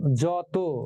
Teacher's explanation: জয়ের পরে যে অ আছে সেই অটা অই থাকবে, সেই অটা ও হবে না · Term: বিবৃত